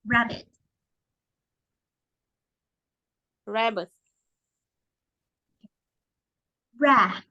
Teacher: Thì mình sẽ không đọc là y, mình sẽ đọc là ơ. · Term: âm ơ